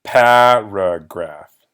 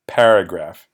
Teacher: The stress is on that first syllable, pa, paragraph.